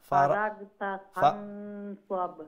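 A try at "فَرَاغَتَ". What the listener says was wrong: জি ফারাগতা লেটা গাইন দে ও এখন যে গাইন উচ্চারণ করছেন ও ওমলাখান মুলাইম হইতো, গা হইতো না, ফারাগ হইতো না, ফারাগ আর ফারাগ দুইটার মধ্যে পার্থক্য বুঝতে পারানি?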